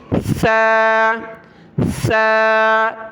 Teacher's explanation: اس میں سیٹی کی آواز نہیں آنی چاہیے، یہ سا یعنی زبان کے نوک دانتوں سے باہر نکالنی ہے، پھر ساؤنڈ نکالنا ہے